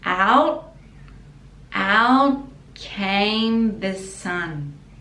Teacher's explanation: we don't pronounce the T, we just put the tongue at the top